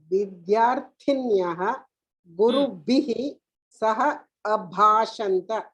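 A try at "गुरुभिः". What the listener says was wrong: Look in this, but the guru bhihi, bha has not come.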